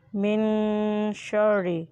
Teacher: اب نون ساکن ہے اس لیے اسے گننا کریں گے، ناک میں آواز لے جا کر ادا کریں۔